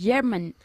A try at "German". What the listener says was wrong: German. Es más fuerte. J. No es la th, es ch. Casi como ch, de chorizo.